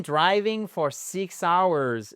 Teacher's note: le fait que hours voit son H être exactement non prononcé